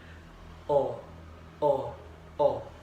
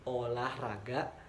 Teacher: lidah jauh ke belakang dan ke tengah disertai dengan menghembuskan udara keluar, sedangkan bentuk mulut dibundarkan